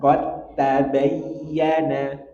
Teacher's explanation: dal ketemu ta, langsung masuk ke ta, seakan-akan dalnya hilang. Kita praktekkan.